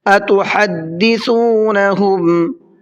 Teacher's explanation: سا کو بھی نرمی کے ساتھ میں پڑھنا ہے اور وہیں سے نکالنا ہے جہاں سے ذال نکلتا ہے۔ ذال اور سا بہت سافٹ لفظ ہیں، ان میں ذرہ برابر بھی سیٹی نہیں ہوتی ہے بولنے میں، ذال نہیں ہوتا ہے بلکہ ذال ہوتا ہے، اور یہ سا نہیں ہوتا ہے بلکہ سا ہوتا ہے، اس چیز کا خیال رکھیے گا۔